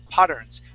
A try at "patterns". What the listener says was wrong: Okay, make sure to add that S at the end, patterns.